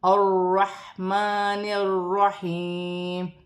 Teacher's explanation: ح ساکن ہے، حروف حلقی میں سے ہے، حلق سے ادا کیا جائے گا اور را کی حرکت کے ساتھ ملا کر پڑھا جائے گا۔